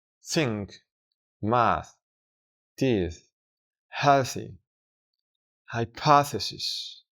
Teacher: Para pronunciar este sonido, simplemente tenemos que expulsar aire con la punta de la lengua ligeramente entre los dientes y sin vibrar las cuerdas vocales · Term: voiceless th sound, Voiceless TH Sound